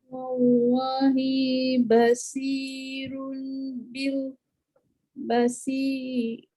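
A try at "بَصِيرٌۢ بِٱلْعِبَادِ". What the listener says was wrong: Ba jangan baca bo, dia bukan bo. Ba tu nipis, sok je tebal. Basirum bil ibad. Okey, jadi biasa kesalahan ketika bacaan yang tebal, yang mendatang tu tebal, terbaca yang sebelum tu tebal. Tebal, nipis. Ba nipis, sok baru tebal. Basir.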